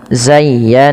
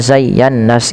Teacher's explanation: Cara membacanya yang pertama, ya-nya dilembutkan, zayya, baru ditekan lagi ke nun, zayyana. Nah, pada lafal nun yang bertasydid ini wajib ditahan bunyi n-nya karena ia ada bacaan gunnah. Karena ada bacaan gunnah sehingga dipantulkan ditahan, bukan dipantulkan, ditahan, zayyana ya.